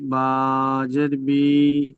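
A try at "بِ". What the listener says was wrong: বি টান হয়ে যাচ্ছে কেন? হামজা জের ই, বা জের বি, একদম টান হবে না।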